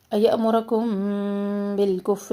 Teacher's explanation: میم ساکن کے بعد با، اخفاء شفوی یہاں کر رہے ہیں